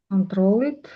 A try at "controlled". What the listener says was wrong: Controlled, controlled. E isn't pronounced in ed endings. isn't never, except for t. If there is t, then you say tid. Otherwise, you never pronounce e.